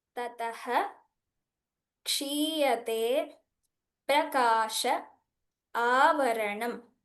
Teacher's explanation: So there's a full pronunciation of the visargas when it is followed by kshakara.